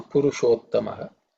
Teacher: So this Purusha, it ends in A, and Uttama start with U. A, U join together make O vowel. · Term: Sandhi